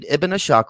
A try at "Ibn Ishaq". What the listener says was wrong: It's not Ibn Ashaq, it's Ibn Ishaq. Learn how to pronounce it.